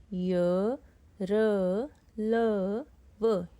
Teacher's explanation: इसमें वायु कहीं रुकी नहीं है। कहीं टकराई नहीं है। सीधा बाहर आई है। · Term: अंतस्थ व्यंजन